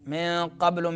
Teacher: من قبل میں نون ساکن ہے، بعد میں قاف آ رہا ہے تو اخفا ہوگا